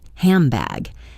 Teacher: The N sound often changes to AM sound before a P or B. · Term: assimilation